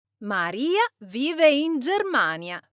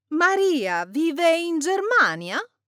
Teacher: let's say it again, but raise our intonation at the end and say, Maria vive in Germania?